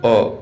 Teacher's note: मध्य स्वर यानी उदासीन जीभ के मध्य हिस्से से उच्चारित जैसे अ ये आपकी मध्य स्वर हैं।